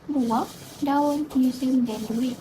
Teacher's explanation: Vokal berganding berlaku apabila wujud dua huruf vokal yang berada bersebelahan tetapi bunyi sebutannya dipisahkan. Contohnya, buah, daun, museum dan duit.